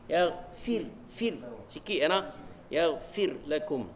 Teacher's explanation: Ra tu sebelum dia bagi kasrah, bagi nipih.